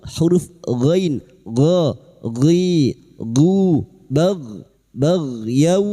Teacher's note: huruf ghain sukun, hati-hati jangan dipantulkan ya, bukan qalqalah